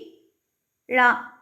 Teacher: நாவின் இரு பக்கங்கள் தடித்து மேல் அண்ணத்தின் நடுப்பகுதியை தொடுவதால் தோன்றும் எழுத்து